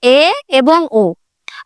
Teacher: উচ্চ মধ্য অর্থাৎ তেমন একটা উঁচুতেও যাবে না আবার নিচুতেও যাবে না। মাঝামাঝি অবস্থাতে থাকবে।